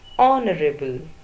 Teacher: H is silent. So, the first sound is O and that is a vowel sound.